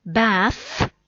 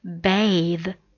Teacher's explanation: say the voiced sound because of silence final e so remember silent final e requires a voiced th sound · there's an unvoiced sound in this word it's a noun bath